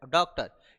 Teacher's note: यह आ और ओ के बीच की ध्वनि है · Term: आगत स्वर